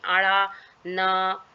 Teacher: जीभ की नोक को तालु यानी मुंह की छत की ओर मोड़ कर उच्चारण किया गया है, और न जो है दंतव्य ध्वनि है। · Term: मूर्धन्य ध्वनि